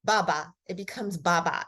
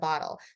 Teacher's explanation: the child actually shortens it by reduplicating the first two sounds so like the consonant and the vowel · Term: reduplication